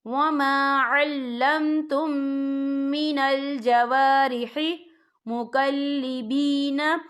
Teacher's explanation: ہم پچھلے میم کو اگلے میم میں مدغم کریں گے اور ہم یہاں غنہ بھی کریں گے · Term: ادغامی شفوی